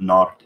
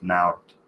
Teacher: I've put nart instead of naart, with the back vowel instead of the front, instead of the diphthong